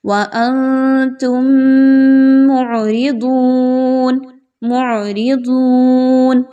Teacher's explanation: میم ساکن کے بعد میم آ رہی ہے، یاد رکھیے اس موقع پر آپ نے اچھے سے غنہ کرتے ہوئے پڑھنا ہے · عین کا مخرج بڑا کلیئر کر کے پڑھیں گے، ضاد کے مخرج پر خاص توجہ دیں گے، موٹا کر کے خوب پڑھیں گے